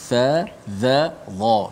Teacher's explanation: Hujung lidah di bawah gigi kacip atas. Itu satu makhraj, satu tempat lahir. Dengan za dan juga tha.